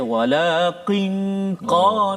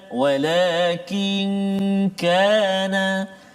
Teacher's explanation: Maknanya pangkat lidah kita tu, qaf kat depan dia, kaf dekat depan dia, qaf di belakang, dekat dengan anak tekak. So kaf depan dia.